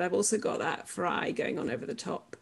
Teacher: But if I did that loudly, it would actually be potentially quite harmful because I've got more than one vibratory mechanism going on at once, which is why you can hear the one pitch of my speaking voice and you can hear the rattle over the top.